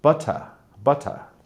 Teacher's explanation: i pronounce the er but i don't pronounce the t whereas a british person will pronounce the t but they won't pronounce the er they'll say more of an ah sound